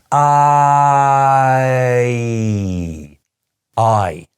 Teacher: it's a vowel sound which changes into a different vowel sound as you are pronouncing it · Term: diphthong